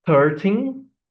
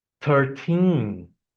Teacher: the wrong pronunciation with the stress in the beginning and after the correct pronunciation with the stress at the end of the word of the number